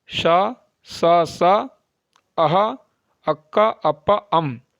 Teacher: ह को छोड़कर जो शेष सात वर्ण है वह अघोष वर्ण होते हैं